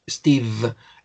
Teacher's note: steve difícil porque steve termine una v sonido de v steve el labio inferior va hacia los dientes superiores para que hay un poquito de vibración